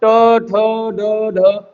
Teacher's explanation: ट वर्ग ट ठ ड ढ अड़ इनका उच्चारण स्थान मुर्धा से होता है